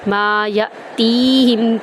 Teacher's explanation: تی کو ہم ایک الف کے برابر لمبا کریں گے ، زیر کے بعد یا آ گیا، تا کو یا میں